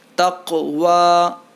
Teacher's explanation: قاف میں بھی قلقلہ ہوگا